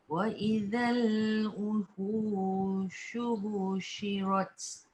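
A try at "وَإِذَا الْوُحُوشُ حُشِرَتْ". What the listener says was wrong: Wa idzal wuhushu husyirat. Yang ni tak ada panjang. Dia cepat. Husyirat. Husyirat.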